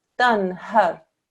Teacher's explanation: Okay, so what we do here is you say dan har. Okay, so there's no stretching out of the noon sound whatsoever.